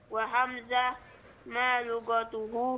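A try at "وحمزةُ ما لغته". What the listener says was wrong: Wa hamzatu. Hidupkan tak marbutahnya.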